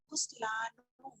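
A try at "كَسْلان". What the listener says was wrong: हाँ, कस्लान, कस्लान। सबके ऊपर जबर आ रही है, देखिए सबके ऊपर जबर आ रही है, पहले लेटर के ऊपर, दूसरे पे सब पे सुकून आ रहा है।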